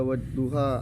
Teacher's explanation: Wadduha mat tabi'i membaca fathah bertemu dengan huruf alif, cara bacanya panjang 2 harokat